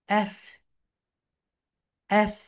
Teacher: Upper teeth, lower lip touch together.